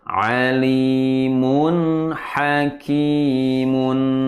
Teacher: Tanwin bertemu ha. Harus dibaca Jelas. Tidak boleh mendengung. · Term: Izhar halqi